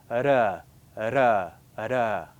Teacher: it's kind of a soft movement, a flap, and this is what the tongue does against the palate